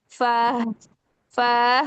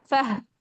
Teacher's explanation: फह फौरन करें, फौरन छोड़े। फा की जबर के साथ जब हा साकिन करना है तो उसको फौरन फा को हा के अंदर छोड़ दें।